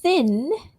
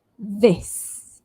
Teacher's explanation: Th, as in thin, no voice there. And then we've got th, we have to use our voice. So touch your throat here to feel it when we say this.